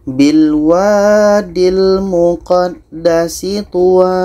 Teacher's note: Tuwa kita panjangkan 2 harkat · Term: mad iwad